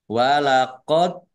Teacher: dal sukun bacaan kolkolah dibaca memantul ditampakkan pantulannya